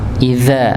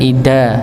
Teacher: idza ujung lidah bertemu dengan ujung gigi seri atas. Idza, bukan ida, tapi idza, ya, bedakan.